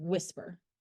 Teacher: Consonant WH is an unvoiced velar glide, semi-vowel. The sound is a voiceless glide produced by rounding the lips and raising the back of the tongue towards the soft palate. There is no complete closure and the sound transitions smoothly into the following vowel.